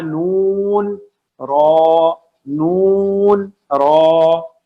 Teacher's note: زبان کی نوک tip of the ٹنگ آگے اوپر کے دو دانتوں کے مسوڑے یعنی گم سے, جب یہ دونوں آپس میں ملیں گے تو ادا ہوگا نون را. نون لائٹ لیٹر ہے, نون لائٹ لیٹر ہے.